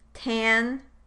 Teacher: So the a in tan or thanks might be raised compared to the a preceding non-nasal consonants.